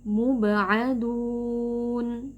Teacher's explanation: Jadi saat kita ucapkan huruf ain tidak disertai dengan adanya nafas atau udara yang keluar.